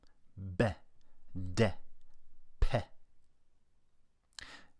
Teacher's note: plosive articulations because of the little explosion of air that you make by stopping and starting the air flow